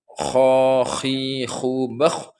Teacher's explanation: Kalau kha itu terdapat ada ngorok sedikit ya, biar betul-betul keluar dari tenggorokan.